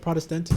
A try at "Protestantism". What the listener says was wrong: Protestantism. You're like focusing on the syllables too much. You just got to run through the word. You just got to go through it.